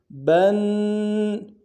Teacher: با کو آگے نون کے ساتھ ملانا ہے، نون کے اوپر تشدید زور دیں گے۔